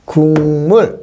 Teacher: 기억이 이응으로 교체 한번 됐죠 · 울림 소리가 강하니까 안울림인 기역은 이응으로 바꾸면 되겠죠. 그럼 바꾸면 국물 이렇게 해서, 자, 기역이 이응으로 교체 한번 됐죠. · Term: 비음화